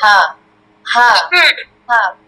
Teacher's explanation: গলার শুরু থেকে উচ্চারণ হয়ে যাবে